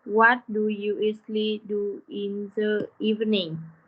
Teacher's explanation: In question words like what, when, where, why, how. We need to lower our voice at the end of the question. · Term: Lower voice